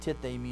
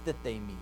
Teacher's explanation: There's going to be a deaspiration of the first one, and it becomes tithemi instead of thithemi.